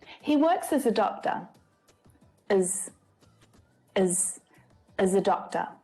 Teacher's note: But it's often unstressed, as. Again, using the schwa for the unstressed sound